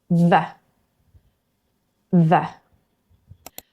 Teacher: For v, teeth touch the lip, air flows, vocal cords vibrate.